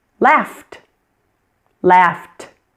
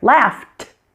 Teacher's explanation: You hear that t that puff of air